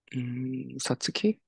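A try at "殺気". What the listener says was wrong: Good guess. This is actually saki. A small tsu, so saki.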